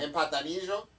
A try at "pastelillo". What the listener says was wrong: No, pastelillo. Pastelillo.